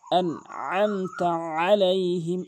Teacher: আইনটি উচ্চারণ করে না, আইনের জায়গায় হামজায় এনে উচ্চারণ করে। আইনের জায়গায় আইন উচ্চারণ করতে হবে হলকের মাঝখান থেকে